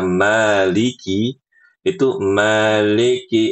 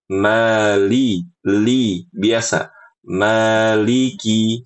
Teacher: Maliki itu lidahnya itu ibu agak melengkung karena faktor dialek tadi